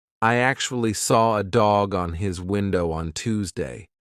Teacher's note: it's like I'm saying one big word. There are no gaps in the middle. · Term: linking sounds